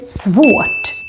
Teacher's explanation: when the R is followed by a T, it becomes quite silent. It's like the R doesn't exist. So we don't say svårt.